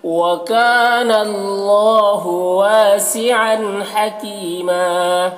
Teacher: یا مدہ ہے، ایک الف کے برابر کھینچیں گے اور یہاں پر وقف کریں گے تو ایک زبر کے ساتھ الف پڑھیں گے · عن کے تنوین میں اظہار ہو رہا ہے، اسے جلد پڑھنا ہے۔ · وَكَانَ میں الف مدہ ہے، ایک الف کے برابر کھینچیں گے اور اللہ کو پر پڑھیں گے، کھڑا زبر ہے، الف مدہ کی طرح، اسے ایک الف کے برابر کھینچیں گے۔